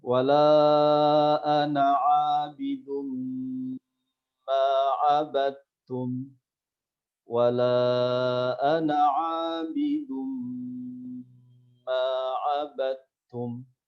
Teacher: Jadi huruf dal sama huruf ta itu makhrajnya sama, tempat keluarnya sama. Sehingga ketika bertemu dal bertemu ta, maka dia harus dibaca idgham. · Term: huruf yang sejenis